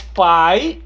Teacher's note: Mas o I, quando ele está acompanhado do A, do E e do O, ele não é vogal. Ele é uma semivogal.